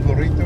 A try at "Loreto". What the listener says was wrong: can't roll the R see.